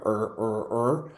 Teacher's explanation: the native R sound in English is a retroflex it happens in the back of your throat